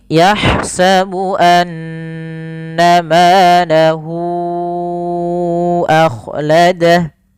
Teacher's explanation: cara membacanya hunya dipanjangkan dulu empat harakat baru dilepas